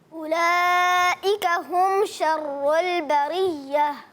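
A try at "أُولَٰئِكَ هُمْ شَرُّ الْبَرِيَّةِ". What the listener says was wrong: اولئک کی مد کو پورا کریں اور بریہ میں را باریک، اس کے بعد آخر میں ہا کی ادائیگی.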